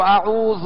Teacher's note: جیسے اعوذ، ذال پر پیش ہے تو اعوذ، دراز نہ ہو، کھینچے نہیں، اور ذال کو نرمی کے ساتھ ادا کرنا ہے